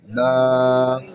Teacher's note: দুই ঠোঁটের ভিজাংশ থেকে হালকা হা করে বলতে হবে